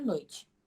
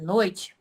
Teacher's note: Um ditongo decrescente, porque o som caiu.